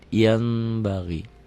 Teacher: Bunyi n-nya berubah menjadi m, ada bindeng sedikit. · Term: Iklab